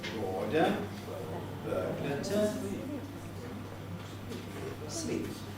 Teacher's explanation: Bored a burglar to sleep. So each of the syllables bored and berg starts at a low pitch and begins a movement up. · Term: climbing head